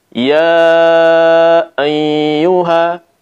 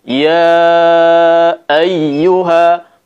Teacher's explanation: Seharusnya tanpa gunnah. Kita ucapkan seperti ini, ya ayyuha, bersih dari gunnah, bersih dari dengung.